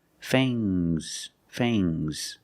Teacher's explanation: Use a long A plus the nasal sound and a soft G. · it's the two teeth the two sharp teeth are called fangs use a long a plus the nasal sound